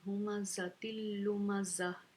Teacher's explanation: ज़ाल को भी लोग ज़ा पढ़ देते हैं, लेकिन इस ये वाली वही ज़ा है, ठीक है। सिटी वाली ज़ा है, हम यहाँ से सिटी की आवाज़ निकालेंगे